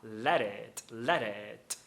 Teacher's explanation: Só que eu percebo que ele não fala o t do it.